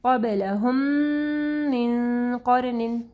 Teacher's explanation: میم کے اوپر دیکھیں آخر میں جزم ہے اور اس کے بعد میم ہے، تو یہ ادغام الشفوی آ رہا ہے، یہاں پہ غنہ ہوگا